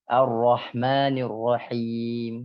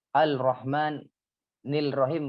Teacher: Karena suara alif lam tidak terdengar, bahkan tidak ada. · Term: idgham syamsiyah